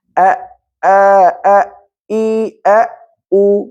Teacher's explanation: উর সময় শুধু ঠোঁট গোল হবে